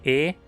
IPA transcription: e